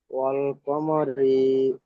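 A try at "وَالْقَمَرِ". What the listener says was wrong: রি বলে টান দিচ্ছেন কেন?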